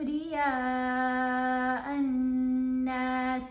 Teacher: حمزہ کو 5 الف کی مقدار جتنا لمبا پڑھنا ہے، نون کے اوپر ہم نے غنہ کرنا ہے اور زبر کے ساتھ الف ہے، نون کو لمبا بھی کرنا ہے.